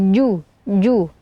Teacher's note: huruf Jim ini keluar dari tengah lidah ya jadi dibaca ju ju jangan sampai ada aliran nafas · Fujuraha, fuju ya, di sini ada huruf jim yang seperti sebelumnya kita bahas, bahwasanya huruf jim ini keluar dari tengah lidah ya, jadi dibaca ju. Jangan sampai ada aliran nafas dan nafas atau angin ya, bukan fuju, tapi fuju.